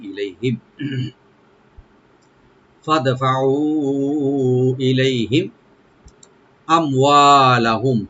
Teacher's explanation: ইলাই, লাই এখানে হারফে লিন, আর হিম এখানে মিম সাকিন এজাহার করবো আমরা, এজাহার স্বভাবিক